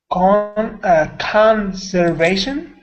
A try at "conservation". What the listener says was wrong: The only thing is, sometimes with your R's, I'm missing that round, full R sound. So, conservation.